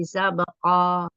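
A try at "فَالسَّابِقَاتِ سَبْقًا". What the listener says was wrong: Jangan pakai H. Fasabiqoti. Fasabiqoti sabaqo.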